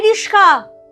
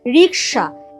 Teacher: এই রিস্কা, আসল ওয়ার্ডটা কিন্তু রিস্কা নয়, আসল ওয়ার্ডটা ছিল রিক্সা। এই যে ক আর স পরস্পর জায়গা বদল করে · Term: ধ্বনি বিপর্যাস